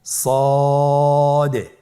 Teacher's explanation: জিহ্বার আগা সামনের নিচের দুই দাঁতের পেট ও আগার সঙ্গে লাগিয়ে উচ্চারিত হয়। · মোটা হরফ উচ্চারণ ক্ষেত্রে মোটা করে পড়তে হবে এবং উচ্চারণ করার সময় তিন আলিফ টেনে পড়তে হবে